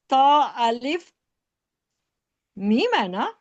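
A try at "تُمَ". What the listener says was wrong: تو الف میم زبر، زبر بھی ہے نا. توم.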